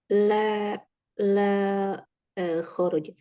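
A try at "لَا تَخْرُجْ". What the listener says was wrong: Taknya jangan hilang. Taknya tetap. Jadi kesimpulannya di sini huruf yang tambahan ya kayak mim, wawu, kemudian ta itu tidak usah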